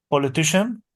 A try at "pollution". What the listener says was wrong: Pollution. Pollution, exactly. It's not politician. Okay, this is politician. Politician comes from politics. Politician means something and pollution means something else. please, because if you want to say politician, absolutely, it's a mistake because this word means something completely different from pollution.